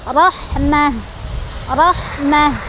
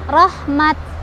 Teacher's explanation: Maka ketika berhenti jadi rahmah, rahmah. Nah, lihat tak marbutohnya berubah jadi hak sukun ya kalau berhenti